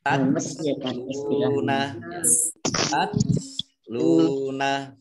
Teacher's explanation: ini tak sukun itu T-nya ada S-nya sedikit gitu ya. Tapi sedikit saja S-nya, jangan banyak-banyak.